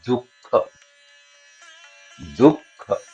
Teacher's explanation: उच्चारण स्थान कंठ की जगह पे तालु तक आएगा नहीं और कंठ पे रहेगा नहीं, उसके बीच में जहां जिह्वा का मूल होता है · तो ये क या खा के बाद, जैसे दुख में जो खा है ना, तो खा से पहले ये जो विसर्ग है ये जिह्वा मूली है। यानी दुख जब आप बोलते हैं तो दू का उच्चारण आप जहां से कर रहे हैं, खा का उच्चारण आपको गले से करना है, लेकिन वो जो विसर्ग है वो जिह्वा मूली से उसका उच्चारण होगा